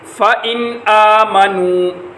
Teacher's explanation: نون کے بعد حروف حلقی میں سے حمزہ آ رہا ہے اس لیے ان کے اوپر غنہ نہیں ہو رہا